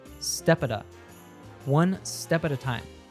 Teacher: these next four words step at a time are linked together the P from step is linked to awwa sound in at · The T from at is followed by another schwa sound and turns into a d sound.